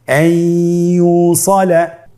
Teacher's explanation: ইয়া হরফটি হলো ইদগামে বাগুন্নার হরফ। তাহলে নুনকে আমরা পরবর্তী হরফ ইয়ার সাথে মিলিয়ে গুন্নার সহিত পড়ব